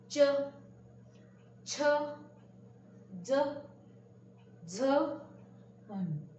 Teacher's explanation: यह बोलते वक्त हमको हमारे तालु, जीभ जो है अपनी, वह तालु को जाके उसका स्पर्श होता है